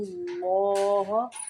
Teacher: اللہ کا لام موٹا پڑھیں گے یہاں پہ کیونکہ اللہ کے لام کے پچھلے حرف کے اوپر پیش ہے، اس لیے۔